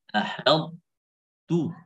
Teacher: Ahadtu harus ada sifat idbaq di ta